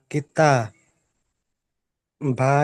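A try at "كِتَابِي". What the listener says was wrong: বি টান হবে কিতাবি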